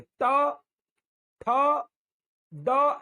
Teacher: जीभ मुड़ जाएगी अपने आप ही, आपको नहीं बोलना, उसको मुड़ेगी और ऊपर जाकर ऐसे टच होगी मुड़कर